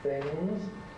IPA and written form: θɪŋz (things)